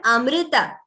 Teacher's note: So it should not be heard as Amruta. It is not U. There is no Ukara there.